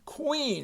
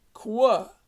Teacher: the sound is actually k w qua